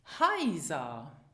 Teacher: the EI diphthong and the AI diphthong are pronounced the same, as in the English word buy